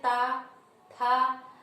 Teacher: तो आपकी जो जीभ होती है वह आपके दांतों को स्पर्श करती है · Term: दंत वर्ग